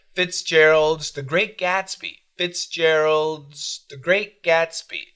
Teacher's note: We got a D, a heavy D, a heavy TH, and then a Z.